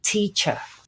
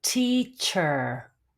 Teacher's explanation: the English would not indicate the r sound in this word it would just be teacher finishing with the schwa sound the Americans would definitely indicate the ER sound so it would